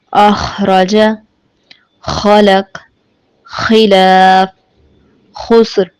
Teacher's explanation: سبق نمبر 15 جس میں آج ہم خ کے مخرج کو سیکھیں گے۔ خ حلق کے نچلے حصے سے ادا ہوتا ہے